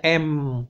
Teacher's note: Bunyi dengung itu adalah bunyi yang diucapkan dengan cara menutup mulut. Jadi udara keluar full penuh dari hidung. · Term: bunyi nasal